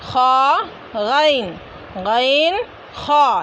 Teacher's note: एक ही है, हलक के दरमियानी हिस्से से अदा होते हैं। ग़ैन, ग़ैन हलक के मुंह की जानिब वाले हिस्से से अदा होंगे